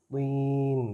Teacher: طا ہے اس کے نیچے زیر ہے لیکن اس کو موٹا کر کے پڑھیں گے کہ موٹے حروف میں سے ہے، طین، یہ تین نہیں ہے، شیاطین نہیں ہے، شیاطین۔